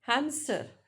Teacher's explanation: So here voiceless stop P is inserted.